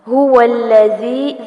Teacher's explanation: ذال کو نرمی سے پڑھنا ہے، آگے مد اصلی بالیا ہے